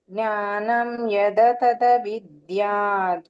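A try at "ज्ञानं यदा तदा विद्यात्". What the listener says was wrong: ನೀವು ದೀರ್ಘ ಇರೋದನ್ನ ಹೇಳಿ ಬೇಕಲ್ಲ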